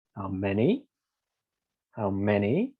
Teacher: with the rising one we say we start from the bottom and we go up